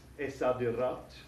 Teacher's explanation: And we know that the sad, letter sad here, is a sun letter, so we don't pronounce the L in the definite article. It disappears and doubles the first letter of the noun.